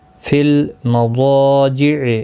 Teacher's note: ضا حروف مستعلیہ ہے، پر پڑھنا ہے، اس کے ساتھ الف بھی آیا ہے، یہ بھی پر پڑھا جائے گا.